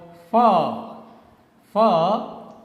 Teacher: spoken with the help of your upper teeth and lower lip